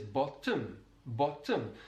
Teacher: it's a kind of doubling of that consonant sound, that T sound that's very distinctive to the Welsh English accent. · A feature that can be found in South Wales is the doubling or extension of a consonant sound that comes between two vowel sounds.